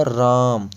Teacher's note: इस र के अंदर जो आपकी आ की मात्रा यानी कि आ स्वर है आपको सिर्फ इसको लंबा खींचना होता है र नहीं लगातार जाएगा क्या जाएगा आ आ की आवाज यहां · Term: प्लुत स्वर